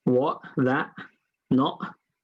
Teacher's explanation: You'll hear a lot of it in East London, you know what I mean? What, that, not, yeah, that sound is a glottal stop.